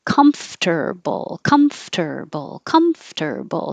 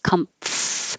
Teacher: Comfortable, comfortable, comfortable. So you make the M, your lips together, and then when you open, your top teeth should be on your bottom lip for the F.